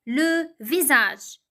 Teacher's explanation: the S is pronounced Z between two vowels